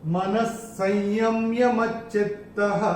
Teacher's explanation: विसर्ग के बाद अगर श या स आता है तो विसर्ग का उच्चारण आधा श या स होता है।